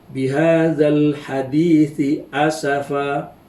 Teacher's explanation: Huruf sa dengan huruf sin, ya. Huruf sa ini dan huruf sin adalah daripada kategori makhraj lisan, tapi tempatnya tidak sama